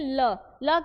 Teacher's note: ल क्या हो रहा है? दंत और मसूड़ा का जो है वो प्रयोग हो रहा है।